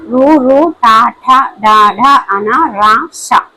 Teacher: నాలుకతో గట్టిగా అంగిలిని తాకుతూ పలికే అక్షరాలని మోర్ధన్యాలు అంటారు